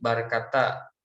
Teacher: Karena ketika orang Arab mengucapkan kalimat ini, maka pengucapan E dalam bahasa Indonesia diucapkan menjadi A. Karena vokal E tidak ditemukan pada bahasa Arab, maka mereka merubahnya pada vokal yang terdekat, yaitu huruf A atau fathah.